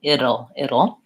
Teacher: it sounds like vowel it flap T and and dark L which basically has a schwa before it so it'll it's two syllables the OL sounds like oh and